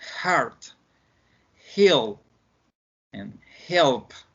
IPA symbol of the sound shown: h